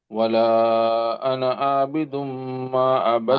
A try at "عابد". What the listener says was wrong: عابد, the عين here.